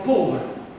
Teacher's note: La E finale di povero, la E finale di povero si sente a malapena.